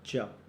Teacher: च यह तालू वर्ण है